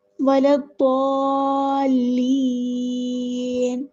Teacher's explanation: ضاد پہ ہمارے پاس مد لازم کلمی مثقل ہے، اس کو 6 حرکات کے برابر لمبا کرنا ہے